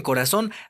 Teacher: en corazón, la sílaba tónica está en la última sílaba